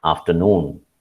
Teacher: the third syllable stressed in afternoon